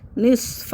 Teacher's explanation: اس کو باریک نہیں پڑھنا ہے، موٹا کرنا ہے. نصفہ، اور مد کو 3 الف کے برابر کھینچنا ہے. اس کو بہت سے لوگ اس کو کھینچتے نہیں ہیں، نصفہ پڑھ دیتے ہیں اور اوین کس پڑھ دیتے ہیں یا اوین کس پڑھ دیتے ہیں، یعنی اس کو حمزہ کو عین بنا دیں، اوین پڑھ دیتے ہیں.